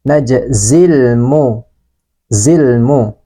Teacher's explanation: Sebagian suara huruf lam ini dialirkan. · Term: lam ta'rif